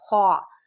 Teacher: یہ حروف حلقی میں سے ہے اور حلق کے درمیان، حلق کے سب سے اوپر والے حصے سے ادا ہوگا